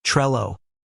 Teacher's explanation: Putting it together, we're left with a pronunciation that sounds like Trello, emphasizing the short E sound and keeping the L sound crisp and singular